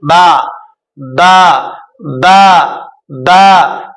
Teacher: दोनों तर वाले हिस्से से बा अदा होता है